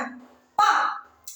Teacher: நம்முடைய இரண்டு உதடுகளும் ஒட்டுவதால் பிறக்கின்றன. பா இரண்டு உதடுகளும் ஒட்டுவதால பிறக்கின்றன.